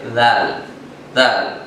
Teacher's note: زبان کی نوک اوپر کے دانتوں کے کناروں سے لگا کر ذال ادا ہوتا ہے